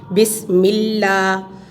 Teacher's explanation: اگر پیچھے والے حرف پر زیر ہو تو لام جلالہ کو باریک کیا جائے گا